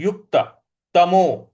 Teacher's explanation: यु के बाद आधा क है युक्त तो यहां पे क पर हमको थोड़ा सा बल लगाना है